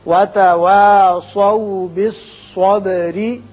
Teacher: स्वाद को पुर पढ़िए, बा की सिफत कलकला, रा बारीक होगा इसलिए कि नीचे जेर है।